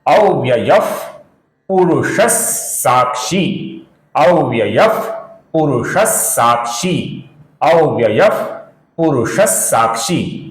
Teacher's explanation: जब विसर्ग के आगे स आता है तो विसर्ग का उच्चारण हल्का सा स इस प्रकार किया जाता है।